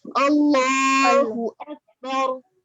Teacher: हम इसमें जलाला अल्लाह के नाम को पुर करके पढ़ेंगे, ठीक है? बारीक अल्लाह नहीं, अल्लाह हैवी कीजिए.